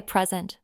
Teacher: If I say present with the stress on the first syllable, it's a noun meaning a gift. I got a lovely present for my birthday.